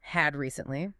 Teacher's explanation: I didn't stop between the words. I linked the D in had directly to the R in recently. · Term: linking